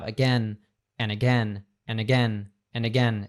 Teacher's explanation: We say it as a schwa sound, and we have an A at the beginning, so it just becomes again or again, as you said. And we also have the word and that oftentimes we cut off the D. So we're having that and that becomes an linking to the again.